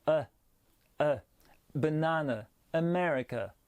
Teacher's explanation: le prononcer comme le EU français E, mais bien très léger. On se rapproche même du A un petit peu.